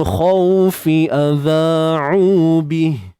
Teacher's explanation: Baik, so kat sini alif lam qamariyah, khaw ni bacaan lin, saya letak BL bacaan lin, bacaan lunak ataupun sifat lunak. Cuma yang lunak tu pada waw lah, kena ingat kha tetap tebal. Kemudian fi adha'u bih, adha 2 harakat mat asli, jangan lupa keluar sedikit hujung lidah.